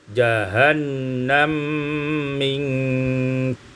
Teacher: Pada ayat 85 jahannama minka, idghamul mim fil mim sehingga kita baca jahannam minka.